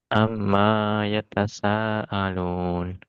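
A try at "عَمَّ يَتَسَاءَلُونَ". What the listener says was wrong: ma-nya nggak boleh panjang karena nggak ada alifnya. Jadi maya amma yatasaalun. Sa-nya 5 harokat dihitung. Itu tadi terlalu pendek.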